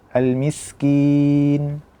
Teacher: Sempurnakan dulu almiskin kemudian kin jangan sampai masuk ke hidung karena kita akan memasukkan ke hidung kin ini nanti di ujung almiskin.